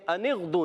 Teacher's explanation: نون کو غین سے ملانا ہے، غین کو ہلانا نہیں ہے